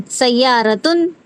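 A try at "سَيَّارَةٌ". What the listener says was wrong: नहीं नहीं, मतलब यहाँ पर ना ता के साथ प्रोनाउंस करते हैं इसे, सय्यारतुन। अगर से मैं कहूँ आपको ता और फिर दम्मतैन को मिलाकर पढ़ेंगे, क्या पढ़ेंगे आप? ता दम्मतैन को तुन, राइट? तो ये वाला साउंड है यहाँ पर।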